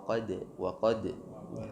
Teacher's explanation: Qad ada pantulan sifat qalqalah di situ, huruf dal, dan pantulan di dal di sini tidak tebal tapi tipis. Wa qad d, bukan seperti huruf qaf atau huruf ta, taqo, ato.